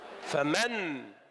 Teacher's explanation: فمن عادت النون إلى إظهارها وامتنع الإضغام